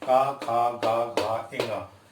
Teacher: का वर्ग में हम ऐसे व्यंजनों को लेंगे जो कंठ से बोले जाते हैं, जिनमें आपकी जीभ और दांत किसी का प्रयोग, यानी मुंह के अंग, अन्य अंगों का किसी का भी प्रयोग नहीं होगा। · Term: कंठ व्यंजन